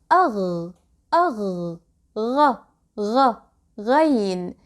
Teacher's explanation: Ghain sound is articulated from the top of the throat here, just like Kha, but Kha is voiceless, while Ghain is voiced. So to pronounce Ghain, you can start with Kha sound and try to constrict your throat muscles.